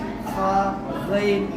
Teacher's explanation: गले के बीच से हा, ऐन अदा होता है। खा, गैन इन दोनों का मखरज एक ही है। गले के ऊपर से खा, गैन अदा होता है।